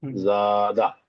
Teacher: এই জাটা তাহলে টান হবে এক আলিফ পরিমাণ আর দাটা টান হবে না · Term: আলিফ মাদ্দা